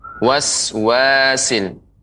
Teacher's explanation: pengucapan huruf sin ya, dia lebih tipis ya, tajam. Waswasil. Ya, lebih banyak desisnya.